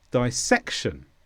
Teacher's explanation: this is a noun and the stress is on SEC